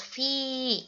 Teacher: fi ini dibaca panjang 5-6 harokat